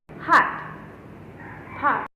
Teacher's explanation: It is an Italian or short O. Open your mouth wide but gently round your lips.